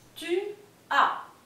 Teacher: solo se va a pronunciar la A, bien, porque la S final en francés no se lee